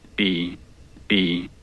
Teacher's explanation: I'm kind of trailing off of my F0 there, so it goes down and sounds a little bit funny by itself